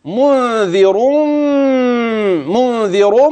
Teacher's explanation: منذر نون ساكنه وبعدها ذال ستخفي · الراء دي هتفخم وصلا · منذر منذر، هتغن وتفخم الراء